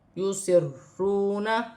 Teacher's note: مقدار کھینچ کر پڑھا جائے گا، را مشدد ہے، یسرون، اور واو ساکن سے پہلے پیش ہے تو واو مدہ بنے گی